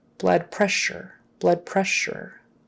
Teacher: SS in the middle is actually an sh sound